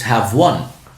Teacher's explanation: The v sound is voiced. So when you say one, the w sound is voiced. So when these two meet together, no problem, it's have one.